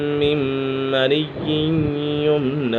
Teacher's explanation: نون ساکن تنوین کے بعد حرف یرملون میں سے میم آ گیا ہے تو یہاں ادغام یرملون ہوگا، یعنی غنہ کر کے پڑھیں گے · یہاں پر میم مشدد ہے، میم مشدد میں ہمیشہ غنہ ہوتا ہے